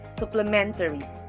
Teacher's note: The stress is on the third syllable, men, supplementary.